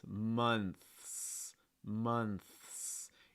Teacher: you need to hear both the th that month and the s